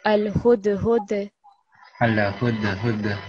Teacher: So do you remember that we covered the qalqala letters? And dal is also a qalqala letter when it takes a sukoon. So on this dal, you're going to vibrate the sound.